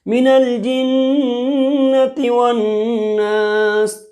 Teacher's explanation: یہاں ناس کے نیچے زیر ہے لیکن ناسی نہیں بول رہے ہیں بلکہ کیا بول رہے ہیں، ناس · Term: وقف کرنا